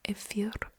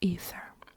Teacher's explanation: the Greek words in Russian they have F in them, F, and in English they have TH sound